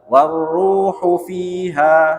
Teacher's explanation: Ru-nya yang panjang, hu-nya enggak panjang. Warruhu fi, hufi cepet dia.